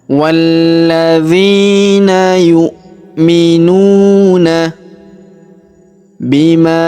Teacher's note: Perhatikan ini huruf hamzah atau a, maka kita baca yu'minuna. Kemudian huruf nu kita panjangkan 2 harokat karena terdapat waw sukun di depannya.